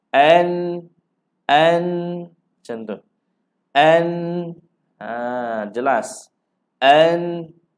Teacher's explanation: nun mati ini tidak boleh dibaca dengun. Kena baca jelas saja. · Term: izhar